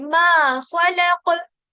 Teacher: खलक में क्या हो रहा है, खा मोटा होगा, लाम बारीक होगा और काफ मोटा होगा, यानी बीच वाला जो हरफ लाम वो बारीक होगा, और इसके जो आसपास वाले जो थॉ और काफ है साइड वाले, वो हैवी होंगे।